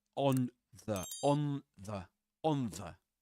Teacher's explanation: Uh so you say on the on the on the that little dental diiocritic under the N shows assimilation which means that the tongue tip is against the teeth because of the following the All right. So the tongue tip is against the teeth, the upper front teeth like this. · But in rapid, everyday speech, the n sound in on anticipates the dental fricative the, and becomes a dental nasal